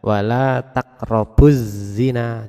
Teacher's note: Jadi ketika kita membaca wala taqrabuz zina, jadi alif lamnya hilang. Bu langsung ke za. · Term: idgham samsiah